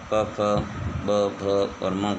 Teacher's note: प वर्ग प, फ, ब, भ और म का उच्चारण ओष्ठ से होता है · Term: ओष्ठीय वर्ण